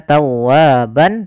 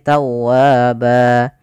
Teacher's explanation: Maka di sini ban ketika di akhir bacaan kita namakan dengan mad iwad, yaitu berubah menjadi panjang ba kalau kita waqaf. Bukan lagi kita baca tawwaban tapi tawwaba.